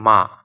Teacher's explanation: মা এটা উচ্চারণের সময় দেখবে যে বাতাসটা নাকের মাধ্যমেও বের হয়ে আসছে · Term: নাসিক্য ব্যঞ্জন